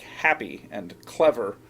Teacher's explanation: the pattern that we call the Troi where the accent comes in the first syllable instead of the second